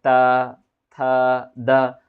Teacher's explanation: आपके जीभ है ना आपके दांत पे आके क्या करता है पुश करता है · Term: त वर्ग